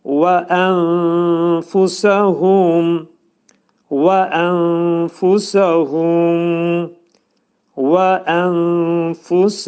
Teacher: Dediyimiz kimi fə hərfinin məxrəci yuxarı üst dişlərlə alt dodağın arasında olacaq. Demək, və ənfusəhum və ənfusəhum və ənfusəhum.